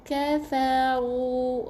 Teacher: Na kafaru, kaf huruf yang nipis, jangan qa, jangan tebalkan, nipiskan. Kafaru, ra tebal sebab ra baris depan.